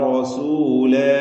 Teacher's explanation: റസൂലിന് പൂർണമായ തഫ് കൊടുക്കുക തടിപ്പിച്ച്